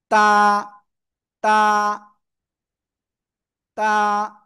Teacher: জিহ্বার আগা সবাই উপরে দুই দাতের গোড়ায় লাগান